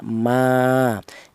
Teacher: Adapun panjangnya mad thobi'i yaitu satu alif atau dua harakat atau dua ketukan